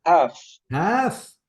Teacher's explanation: The L is silent before the final letter.